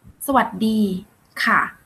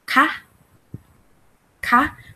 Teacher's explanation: When we say สวัสดีค่ะ, we use lower sound, right? But when we want to make a sentence, you have to use ka, ka, the rising sound.